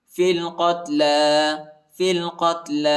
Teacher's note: علیکم القصاص فی القتل، فا کو لام کے ساتھ ملائیں گے، یا اور الف نہیں پڑھا جاتا، یا اور الف پر حرکت نہیں، یا بھی نہیں پڑھا جاتا، یا پر حرکت نہیں، ٹھیک ہے۔ لام پر کھڑا زبر آیا ہے، اس کو ایک الف کی مقدار تک کھینچیں گے۔